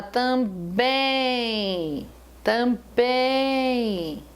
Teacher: quando você fala também também você não pronuncia o m eu não falei tamb eu falei tamb bem em som nasal